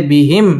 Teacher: মিম সাকিনে ইজহারে খাস গুন্না ছাড়া পড়তে হবে